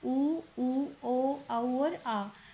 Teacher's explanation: वृत्ताकार स्वर है, होठों की आकृति गोल होती है